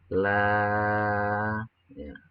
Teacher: Karena ada mad asli atau mad tabi'i yang bertemu dengan huruf hamzah di lain kata. Cara membacanya ialah dibaca panjang selama 2 sampai 5 harokat. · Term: mad jaiz munfasil